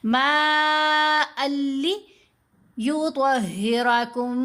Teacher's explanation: یہاں ہم نے ادغام کیا، ما ان نہیں پڑھا، ما ال پڑھا، لیکن ہم نے غنہ نہیں کرنا. اگر کوئی پڑھے نا ما ال، یہ جو ال کی آواز کو لمبا کیا تو یہ غلطی ہے، یہ نہیں ہونے دینا.